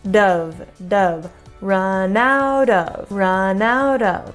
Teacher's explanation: we kind of do a flap t for out of out of but it's almost like the flap T starts the of with the flap T part so it's like Dove Dove run